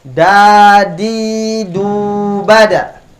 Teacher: Ujung lidah bertemu dengan usul atau gusi gigi seri bagian atas.